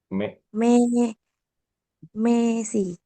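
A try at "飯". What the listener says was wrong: Bagus Messi.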